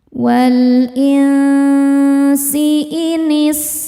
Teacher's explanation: Cara membacanya nun disamarkan ke sin disertai bunyi dengung. Samar dan dengungannya sama besar. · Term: ikhfa hakiki awsat